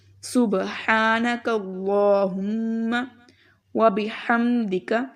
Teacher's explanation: میم کے اوپر شد ہے تو میم پر غنہ کریں گے ہم لوگ. سبحانک اللہم وبحمدک، ہا کی آواز اچھے سے نکالیں.